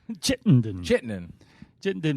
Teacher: hit the first syllable and then mumble through the rest